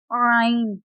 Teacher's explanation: اس میں سے وسط حلق سے عین ادا ہوتا ہے